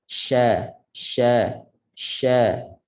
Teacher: huruf shin, makhrajnya tengah lidah sentuh langit.